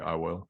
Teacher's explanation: the first person pronoun is not necessarily a diphthong